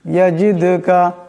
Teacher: এখানে দাল সাকিন, এই দাল সাকিন, দাল হলো কলকলা হরফ, তা অবশ্যই টক্কর খাবে।